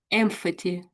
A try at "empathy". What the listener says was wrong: I think you're putting I think you're putting an H in there.